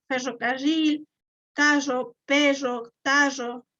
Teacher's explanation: Acá en el Ecuador, pues en Cuenca, sí se arrastra bastante la R